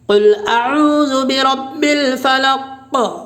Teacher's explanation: وقفہ کرنے کی حالت میں قاف میں قلقلہ ہوگا، کیوں وقفہ کی حالت میں قاف ساکن ہے، اور قاف حروف قلقلہ کے 5 حرفوں میں سے ہے۔